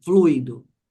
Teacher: o u aqui é a vogal e esse i é a semivogal